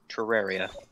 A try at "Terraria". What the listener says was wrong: just sound like you said it with like a TR instead of a TER.